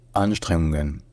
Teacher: il y a un accent tonique secondaire, qui est sur la deuxième syllabe, sur le streng. Donc ça devient Anstrengungen.